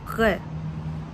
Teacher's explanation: Voile de palais relevé. Resserrement du passage de l'air au niveau du voile du palais. R. Vélaire.